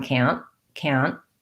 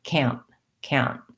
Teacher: we make a stop t on can't